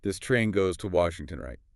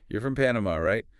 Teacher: when it's a question like this at the end of a sentence, your voice goes up. That rising intonation signals the question. · Really focus on that rising sound at the end on right.